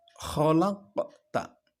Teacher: Di situ ada qaf sukun yang dibaca memantul, tetapi tipis. Pantulannya tipis. Disebut dengan qalqalah sughra.